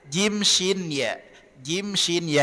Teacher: Jim Shin ya ini berada di tengah lidah kesalahan umum yang sering terjadi keluarnya dari ujung lidah sehingga bunyinya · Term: huruf Jim